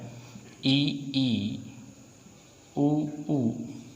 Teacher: वे स्वर जिनके उच्चारण में हमारा मुख द्वार लगभग बंद रहता है उसे हम संव्रत कहते हैं।